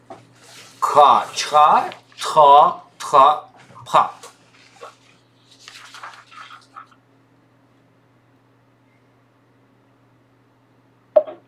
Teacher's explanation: Первый столбик это глухие. Второй столбик глухие с придыханием